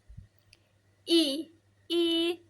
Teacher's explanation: I I itu termasuk vokal depan tinggi. I I terus ti eh-nya berulang.